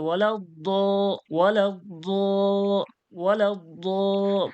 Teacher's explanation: মানে আওয়াজটাই তাদের মতোই হচ্ছে, হ্যাঁ? হ্যাঁ, আওয়াজটা জ দিয়ে হচ্ছে, অন্তস্থ জ দিয়ে হচ্ছে, কিন্তু মোটা পুর করে হচ্ছে